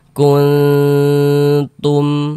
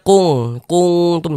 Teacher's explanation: cara membaca ikhfa tadi dibaca apa? Dibaca samar dan berdengung. Kita baca kuntum, jangan dibaca kungtum, jangan. · Didengungkan. Nah, di bagian kun itu kita tahan, kita panjangkan sejenak sepanjang 2 harokat